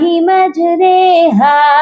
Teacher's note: ایک واحد لفظ ہے جو کہ امالہ کر کے پڑھا جاتا ہے، یعنی جھکا کر پڑھا جاتا ہے۔ اس ورڈ کو مجہول کر کے پڑھا جاتا ہے، اور پورے قرآن پاک میں یہ ایک ہی ورڈ ہے جو ایسے ریڈ کیا جاتا ہے، جس کو کہتے ہیں یا مجہول۔